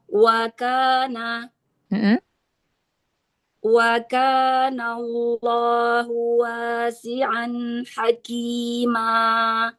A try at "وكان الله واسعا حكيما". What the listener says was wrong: Haki, tebalkan lagi kafnya ya.